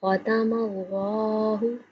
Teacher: لفظ اللہ کو موٹا پڑھا جائے گا کیونکہ اللہ سے پہلے حرف کے اوپر زبر آ رہی ہے، اس لیے اللہ کا لام موٹا پڑھیں گے۔